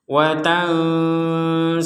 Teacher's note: Nah, ini ada kita samarkan nun sukun bertemu dengan sin.